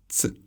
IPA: t͡s